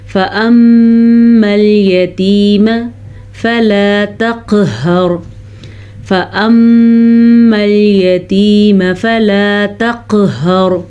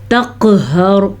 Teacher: تقہر میں قاف کے اوپر قلقلہ ہو رہا ہے، اور را کو پر پڑھیں گے کیونکہ را ساکن، اور ساکن ان کے پیچھے زبر ہے تو را پر پڑھی جائے گی.